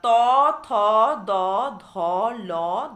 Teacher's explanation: তারপরে দেখো দন্ত ব্যঞ্জন। জিহ্বাগ্র এক্ষেত্রে কিন্তু আর উল্টানো নয়, শুধুমাত্র জিহ্বাগ্র ওপরের দন্ত পুক্তিতে বাধা আঘাত করার ফলে কি হচ্ছে না, শ্বাসবায়ু নির্গমনে একটি বাধা সৃষ্টি হচ্ছে, বা জিহ্বাগ্র ওপরের দন্তভুক্তিতে শ্বাসবায়ু নির্গমনে বাধা দেওয়ায় দন্ত ব্যঞ্জন ধ্বনি উচ্চারিত হচ্ছে।